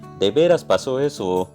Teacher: se desciende el tono como en el Antiguo Distrito Federal